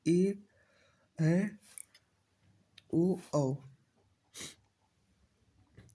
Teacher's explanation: ए ऐ का उच्चारण स्थान कंठ तालुप्य होता है और ओ और औ का उच्चारण स्थान कंठोष्ठी होता है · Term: संयुक्त स्वर